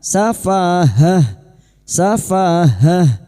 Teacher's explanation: tak marbuto ini pada saat dibaca wakaf bunyinya ha